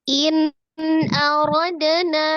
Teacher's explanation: Nun sukun ketemu dengan alif itu dibacanya izhar ya, dibacanya jelas, jadi tidak ditahan ya. In aradna ada dal sukun itu kolkolah ya, jadi dipantulkan, kolkolahnya sugra di tengah ya